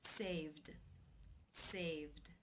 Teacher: the final sound is the V voiced consonant sound so the IDI will take the voiced D sound ending saved